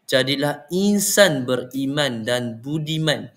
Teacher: Tekanan jatuh pada perkataan beriman dan budiman bagi menegaskan maksud utama nasihat.